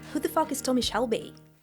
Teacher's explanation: Flat falling intonation. Unlike some British accents that rise at the end of sentences, Brummie tends to stay level or deep slightly, [music] giving it that cool, heavy quality you hear from Tommy. · As it is a question, I would say it with a rising intonation.